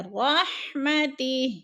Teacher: رحمتی، ادھر نیچے کھڑی زیر ہے، وقف کی صورت میں ہم نے ہا کو ساکن کر کے پڑھنا ہے